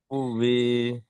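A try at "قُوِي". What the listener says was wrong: টান দেবেন না, টান নেই।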